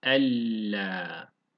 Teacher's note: Bir tane buraya L ekliyoruz. Ella gibi okuyoruz. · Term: İdgamı bila gunne